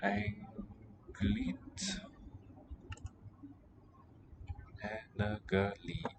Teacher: The A really represents just that glottal stop initial A in Anglit, rather than the vowel quality.